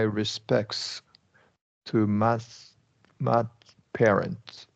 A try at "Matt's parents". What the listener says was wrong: Yeah, a little bit wider, A there in Matt's. You could have done it in parents. They don't mark it, but that's right. NTS.